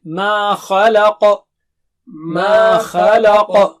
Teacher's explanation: ما خلق، ما مد ہے وہاں پر، اور خا، خا اونچا ہے، لام باریک ہے، اور قا پھر سے اونچا موٹا ہے